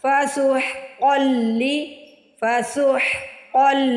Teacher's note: ادھر سین کی نہیں صاد کی آواز آنی چاہیے، صاد کو موٹا ادا کرنا ہے · ہا کو حلق سے بھی ادا کرنا ہے، اور ہا کے اوپر کھڑی زبر ہے، ہا کو 1 سیکنڈ کے لیے سٹریچ بھی کرنا ہے ، کھینچ کے ادا کرنا ہے۔ فسحقا لأصحاب السعیر، اصحاب السعیر،